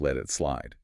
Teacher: You have a T followed by a vowel which triggers the flap for efficiency.